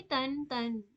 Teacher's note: نون ساکن اور تنوین کی آواز ایک دم یکساں ہوگی یعنی سیم ہوگی، دونوں کی آواز ایک جیسی ہوگی.